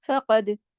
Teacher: فقد میں قاف موٹا پڑھا جائے گا اور دال پہ کلکلا ہوگا. دال جو ہے وہ کتبن جدن کے حروف میں سے ہے نا، قاف طا با جیم دال.